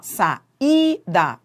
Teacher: Qual é a vogal tônica? É o I. O i é tônico. É, é a sílaba tônica.